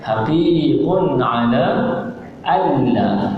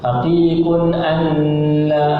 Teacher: Bila dah besar bunyinya idgham, maknanya nun tadi dimasukkan ke dalam lam tanpa didengungkan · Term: idgham bila gunnah